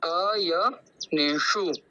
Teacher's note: तो हम उसका ज्यादा लंबा उच्चारण नहीं कहेंगे और जो मूर्धन्य शकार है उसके अंदर हमको हमारी जीवा को तालव्य की ओर ले जानी है और फिर श बोलना